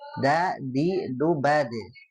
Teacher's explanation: dal itu ketika disukunkan dia punya sifat memantul ya